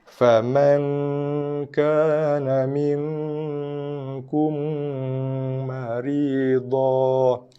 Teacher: Mim jumpa mim dengung idgham, tutup mulut.